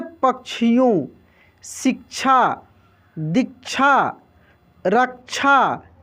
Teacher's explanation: क का और श का दोनों का उच्चारण होता है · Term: संयुक्त छ